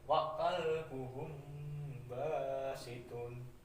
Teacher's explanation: Jadi ketika ada huruf mim mati bertemu dengan b itu dibaca samar-samar ya, dan disertai dengan dengung. Jadi samar dan dengung ya, mendengung. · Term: ikfa safawi